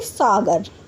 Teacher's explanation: यानी कि दांतों की सहायता से बोला जाता है। जब हम स वर्ड का उच्चारण करते हैं तो जो हमारी जीभ है वह दांतों को छूती है। दांतों को स्पर्श करती है।